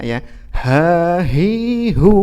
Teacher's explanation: ketika berhenti atau ketika waqaf atau sukun ya maka keluar nafas dari dari mulut kita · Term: huruf hams